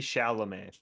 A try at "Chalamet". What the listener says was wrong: No, not with the T. Chalamet. He's French. French. His name's French.